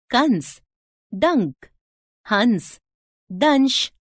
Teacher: अनुस्वार। इसका उच्चारण नाक से झनकार के रूप में होता है